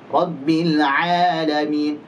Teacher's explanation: A tipis dan jangan keluar dari hidung. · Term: huruf ain